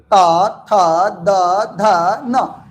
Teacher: त थ द ध न यानी सब का उच्चारण स्थान दांत है